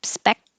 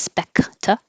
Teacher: you hold the k spec instead of specta